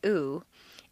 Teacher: vowel uh whose pronunciation is a combination of it and uh the u sound is located far forward in the mouth and requires you to round your lips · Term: tense vowel